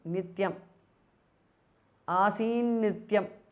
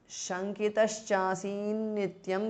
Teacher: the t in the end changes to n because of sandhi